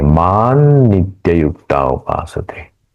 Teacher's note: अनुस्वार के बाद में न है और न जो ग्रुप है त थ ध न इस ग्रुप का अनुनासिक है न इसलिए यहां हम इस अनुस्वार का उच्चारण न के जैसा करेंगे